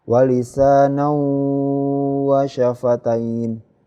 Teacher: Kalau idgham bi gunah masuk dengan mendengung ya, tanwinnya ini masuk ke huruf waw dengan mendengung